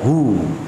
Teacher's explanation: Wawunya ini keluar dari al-jauf. Kenapa dari al-jauf? Karena huruf-huruf mad. Ingat huruf mad itu keluar dari al-jauf. · hu dipanjangkan berapa harokat nih? 2 harokat karena dia menjadi mad tabi'i. Harus dibacakan panjang hu.